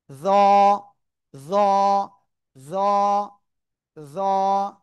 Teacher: এ অক্ষরটা জিহ্বার আগা সামনের উপরের দুই দাঁতের আগার সাথে লাগাবেন। · জিহ্বার আগা, সামনের, উপরের 2 দাঁতের আগার সাথে লাগাবেন। লাগিয়ে কি করবেন? উচ্চারণ করতে হবে একটু মোটা আওয়াজ।